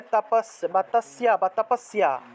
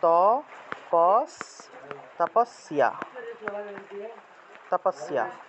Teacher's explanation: তাহলে তাপাস বা তাসিয়া বা তাপাসিয়া আমরা বলি না, মনে করেন যে তপস্যা, দন্তস্ব জফলা আকার, এক্ষেত্রে দন্তস্ব উচ্চারণ হলো স, জফলার পরিবর্তে ইয় আর আকার আ উচ্চারণ হলো, তাহলে তাপস্যা উচ্চারণ হবে ত পস, তাপস্যা, তাপস্যা, এভাবে উচ্চারণটা আসবে।